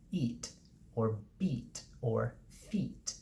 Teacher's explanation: we've got a high front vowel